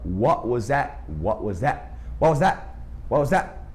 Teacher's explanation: Eles não falam o T, e o that, muitas vezes, o TH nem é falado.